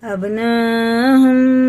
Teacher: یہ مد متصل ہے، اس کے بعد حمزہ آتا ہے تو 4 الف کے برابر کھینچ کے پڑھیں گے